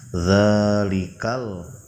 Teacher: Huruf dza yang pertama hukumnya mad thabi'i panjangnya dua harakat.